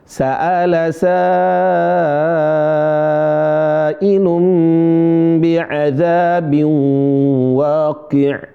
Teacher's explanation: Pertama di situ ada mad, yaitu mad wajib dibaca lima harakat. Bagaimana itu lima harakat? Ditahan suaranya sampai lima ketukan.